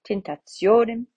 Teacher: The O is long, the penultimate O, so it gets the accent.